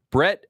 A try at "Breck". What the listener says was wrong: Did you say Brett? Breck. There's no T's in Breck.